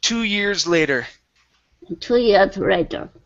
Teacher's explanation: sliding from the uh rs into the l